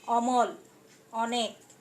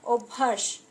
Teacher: বিবৃত বা স্বাভাবিক উচ্চারণ, যেমন অমল, অনেক। 2 নম্বরে সংবৃত বা ও ধ্বনির মতো উচ্চারণ, যেমন অভ্যাস।